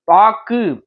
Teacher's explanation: இறுதியில் வரும்போது ஒரு மாத்திரைக்கு பதிலாக அரை மாத்திரை அளவே ஒலிக்கும். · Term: குற்றியலுகரம்